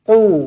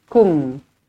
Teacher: Huruf qaf dia tebal sedikit daripada huruf kaf.